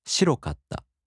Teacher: In the downstep-type adjectives, the accent falls on the fifth to the last mora.